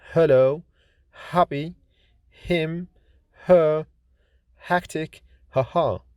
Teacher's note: H is voiceless glottal fricative consonant like in hello, happy, him, her, hectic, haha.